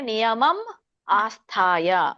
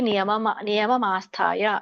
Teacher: ಮ ಅನ್ನುವಂಥ ವ್ಯಂಜನ ಹಿಂದಿನ ಪದಕ್ಕೆ ಹೋಗುತ್ತೆ, ಆ ಅನ್ನುವಂಥ ಸ್ವರ ಮುಂದಿನ ಪದಕ್ಕೆ ಹೋಗುತ್ತೆ. ಹಾಗಾಗಿ ಆಸ್ಥಾಯ ಅಂತ ಆಗತ್ತೆ.